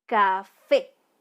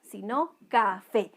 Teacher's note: La sílaba tónica de esta palabra es fe, ¿ya? Porque no es café, sino café.